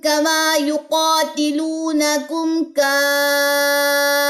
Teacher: اوپر جائے گی آواز اور پھر گرے گی فا کے جزم کے اوپر